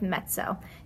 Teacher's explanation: You have that kind of t sound instead of a z sound.